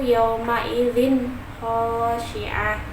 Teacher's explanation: Nah, ada huruf zal berharokat kasroh tanwin yang bertemu dengan huruf kha. Ya, dibacanya jelas dan tidak berdengung sama sekali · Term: izhar